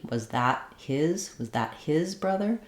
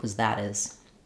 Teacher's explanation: For example, if I was trying to say, was that his brother as opposed to her brother, then I would keep the H and I would use an unreleased T